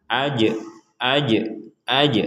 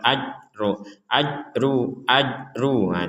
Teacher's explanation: ini juga ada jim bertanda sukun, kita membacanya dengan pantulan.